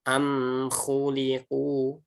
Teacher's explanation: Nggak boleh dipantulkan ya. Karena mim sukun ini bukan huruf qalqalah. Jadi nggak boleh am khuliqu tidak, tapi dia tawalud dirapatkan dengan sempurna.